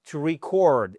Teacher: vous passez de l'accentuation sur la première syllabe à la seconde syllabe